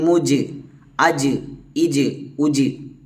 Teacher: ഈ അഞ് അക്ഷരങ്ങൾ സുക്കൂനആയിട്ട് സംഭവിച്ചു കഴിഞ്ഞാൽ നമ്മൾ ശക്തിയായിട്ട് അജ് ഇല്ലെങ്കിൽ അദ് ഇല്ലെങ്കിൽ അഖ അങ്ങനെ മുഴക്കി ഉച്ചരിക്കണം